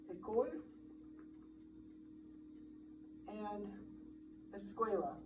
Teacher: So one sound change that occurs also in Romance languages is called prophesis. So French and Spanish have a prosthetic vowel before the sequence SK